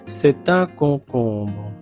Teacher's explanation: le ON et le OM, c'est la même voyelle nasale ON.